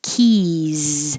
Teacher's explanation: The vowel is E, so your tongue is very high in the E position. Keys. And there's no stopping of the airflow because everything, well, the K stops the air, but then the E's has constant airflow.